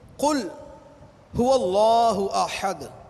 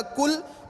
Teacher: ہم پڑھتے ہیں قل هو اللہ احد، قل قاف کے ساتھ، گول قاف، اس کا معنی ہے کہ اے محبوب تم کہو، تم فرما دو وہ اللہ ایک ہے، تم فرما دو وہ اللہ ایک ہے۔ اب اس قاف کو پر کر کے نہ پڑھا اور اس کو باریک پڑھا تو یہ بن جائے گا کل، وہ کاف ڈنڈے والا، حکام والا۔